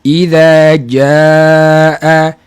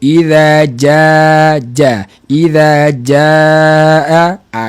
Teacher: Cuma sikit perbezaannya adalah tempat keluar, di mana jim Al-Quran daripada tengah lidah, J yang kita guna untuk sebutan harian kita daripada hujung lidah. Jadi daripada hujung lidah dengan tengah lidah itu akan memberi kesan kepada sifat suara huruf jim.